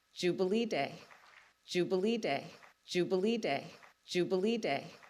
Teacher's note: the word jubilee is stressed but what's really stressed is not the whole word it's the stressed syllable jubilee the third syllable